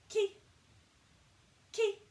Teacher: A nice light head resonance.